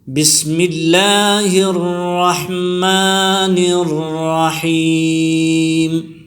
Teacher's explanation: الرحیم میں بھی اسی طرح ہے، را موٹی پڑھی جائے گی زبر کی حالت میں، اور اس میں یا مدہ ہے. · یا مدہ اسے کہتے ہیں جب یا ساکن ہو اور اس سے پہلے زیر آئی ہو تو اس کو یا مدہ کہتے ہیں، اس کو کھینچ کر پڑھیں گے. اور میم کے زیر کو وقف کی حالت میں ساکن کر دیں گے